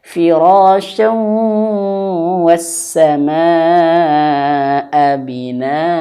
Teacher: masukkan ke huruf wau dan digunahkan masukkan ke dalam hidung